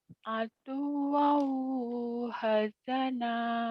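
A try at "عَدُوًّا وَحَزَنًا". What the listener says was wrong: Wa-nya dibaca lagi. Aduwau, aduwau, aduwau wa hazana. Aduwau, ain, aduwau wa hazana.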